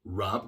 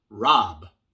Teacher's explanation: Rub con U, el schwa, rub. Y rob con O, pero en inglés el sonido corto de la O es A.